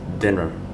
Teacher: for the word dinner, the vowel E at the end, you can say it with Schwa sound